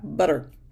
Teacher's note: The flap is that quick hit of the tongue between the teeth like that middle sound in butter.